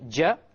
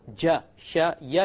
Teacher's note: You use the entire middle portion of the tongue. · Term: middle of the tongue